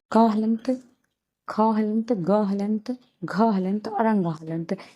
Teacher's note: यानी इसका जो उच्चारण स्थान है वो कंठ है। क वर्ग का उच्चारण स्थान कंठ होगा।